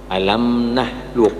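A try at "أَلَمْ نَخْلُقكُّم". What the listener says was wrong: Jangan ditahan, alam Masih ditahan, mohon maaf. Nakhlukum. Bukan tapi seperti orang mengorok, begitu, ya.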